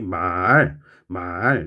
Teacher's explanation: 상성이 라는 녀석이 낮았다 높아지는 소리